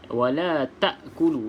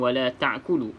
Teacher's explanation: hamzah dengan ha berada paling bawah. Ain dengan ha berada di tengah-tengah.